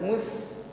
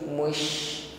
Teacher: Jadi bedakan antara mengucapkan shin yang titik 3 dengan sin ya yang tidak ada titiknya. Tentu yang titik 3 ini nafasnya lebih meluas di dalam mulut kita, bukan sekedar mus dikit tetapi mush. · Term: tafasyi